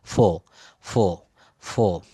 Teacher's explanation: শব্দের শেষে আর বা র থাকলে ব্রিটিশরা এটা কিন্তু উচ্চারণ করে না